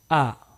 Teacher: huruf hamzah atau Alif ini dibaca lepas tanpa ada halangan apa-apa